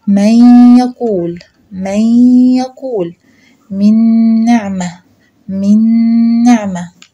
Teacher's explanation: لأن وأنا بدغم بيحصل إلغاء لحرف النون نفسه، يعني بيبقى كأنه مش موجود، بس بتفضل صفته، الصفة بتاعته اللي هي الغنة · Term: إدغام بغنة